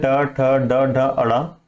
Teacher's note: हम अपने जीभ को ऊपर की ओर मोड़ते हैं, हल्का सा हमारा जीभ ऊपर की ओर फोल्ड होता है, तो ये होता है मूर्धा।